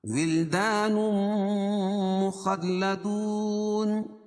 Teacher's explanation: تنوین کے بعد ادغام مال غنہ کے 4 حرفوں میں سے میم ہے تو یہاں غنہ ہوگا. مخلدون واو ساکن سے پہلے پیش ہو تو وہ مدہ وقف کی صورت میں یا مد عارض وقفی ہوگا.